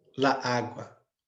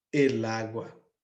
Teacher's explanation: Esses 2 As estão gerando um som não muito agradável. Não está fluindo. La água. Fica um pouco travado, né?